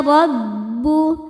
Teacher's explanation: Huruf ro dibaca secara tafkhim karena roho berharakat di atas yaitu harakat fathah. Cara membaca ro ini adalah ditebalkan dengan cara mengangkat pangkal lidah kita.